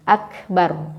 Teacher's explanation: Kalau kita berhenti di situ maka ro-nya ditafhimkan, ditebalkan bunyinya.